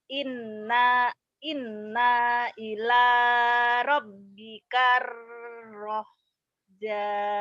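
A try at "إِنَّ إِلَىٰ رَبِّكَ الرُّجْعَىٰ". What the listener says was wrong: Ruj'a. Ruj'a. Di sini innya jangan dipanjangin ya karena nggak ada madnya. Inna ila inna ila rabbikar ruj'a. Ruj'a ain ruj'a. Inna ila innya ditahan, a-nya dilepas. Inna ila gitu.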